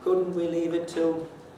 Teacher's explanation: of head marked is a high level head that means that on the first accent the pitch goes to a reasonably high pitch and it stays there more or less through all the remaining syllables of course it's not flat as if drawn with a ruler